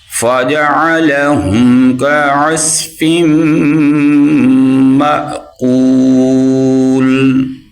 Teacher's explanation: اور یہ عین کی آواز نکالیں، یہ بھی عین کی آواز نکالیں، اور میم کے آگے حمزہ، حمزہ کے اوپر سکون ہے، جزم ہے، اور اس کو ہم جھٹکے کے ساتھ پڑھیں گے